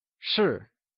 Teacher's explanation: it is said with a falling tone also known as the fourth tone